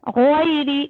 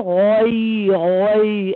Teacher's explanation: آپ غین کو بھاری کریں, یا کو ہلکا کریں